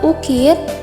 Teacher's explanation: fonem vokal U pada bagian atas, tinggi, belakang, bundar, yang direalisasikan dengan bunyi U pada contoh kata ukir, yang distribusi fonemnya berada di awal kata.